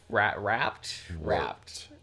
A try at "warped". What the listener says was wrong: The R has to go after the W.